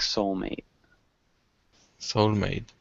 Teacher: you swallow that T sound at the end so it sounds like soul mate soul mate good better sounds